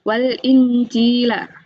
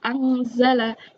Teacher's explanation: Cara membacanya adalah samar antara idhar dan idgham. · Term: ikhfa